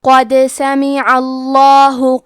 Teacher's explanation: کلمت قد میں قاف کی ادائیگی زبان کے جڑ اور تالو کے نرم حصے سے ہے. قاف حروف تفخیم میں سے ہے تو ہم یہ حرف کو موٹی آواز میں پڑھیں گے.